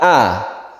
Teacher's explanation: fathah itu berbunyi a dengan mulut kita agak terbuka